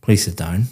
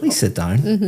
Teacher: very flat intonation going down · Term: intonation is going up